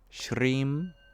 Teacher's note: The R sound is made as a retroflex